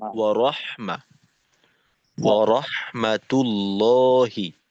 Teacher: তো ওয়া এইখানে আমরা রাহমা রাহমাতুল্লাহি বলবো না, রহমা বলবো।